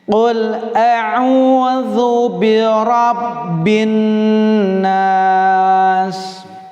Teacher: Ada alif lam syamsiyah, jangan dilewatkan alif lamnya. Di situ adalah idgham ya, dimasukkan alif lamnya ke huruf nun. Jadi silakan tidak terbaca, tapi ketika penulisan harus ada.